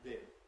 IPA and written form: bɪn (bin)